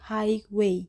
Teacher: Dengan suku kata highway, ciri khasnya adalah penggunaan diftong I pada kata high, penekanan stres jatuh pada suku kata pertama, highway, mengikuti pola umum kata majemuk dalam bahasa Inggris